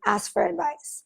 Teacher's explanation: There are times when native speakers will drop the K, ask for advice.